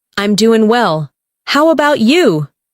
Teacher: Notice how about you sounds like one smooth phrase, not separate words.